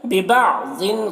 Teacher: ضاد کو پر پڑھیں گے، حروف مستعلیہ میں سے ہے، اور ضیو میں ادغام ناقص ہو رہا ہے، غنہ کے ساتھ میں پڑھیں گے۔